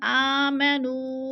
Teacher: نو پہ مد منفصل ہے، 4 الفی مد ہے، 4 الف کے برابر ہم نے اس کو کھینچ کر پڑھنا ہے